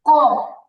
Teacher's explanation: আমাদের জিহবার ভিতরে আরেকটা ছোট জিহবা থাকে জিহবাটাতে হালকা ধাক্কা লাগবে